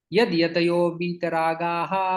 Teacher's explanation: संधि यहाँ पर बन जाती है, यहाँ पर विसर्ग का ओ में परिवर्तन हो जाता है